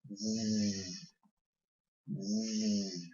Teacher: Your throat and tongue should vibrate as you push air out of your mouth. Z is voiced.